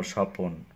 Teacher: মাঝখানে যখন অ ধ্বনি আসবে সেটা হচ্ছে মধ্য স্বরাগম